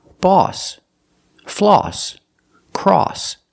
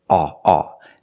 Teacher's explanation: These words are all pronounced with the aw sound. The sound is made back here, aw, aw. Not ah in the front, but aw in the back.